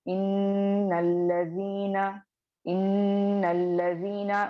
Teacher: मैं नून को डायरेक्टली लाम से मिला दी और हमजतुल वस्ल को ड्रॉप कर दी, क्योंकि हमजतुल वस्ल से पहले मुतहर्रिक हर्फ आ रहा है, तो यही समझना है। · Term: हमजतुल वस्ल ड्रॉप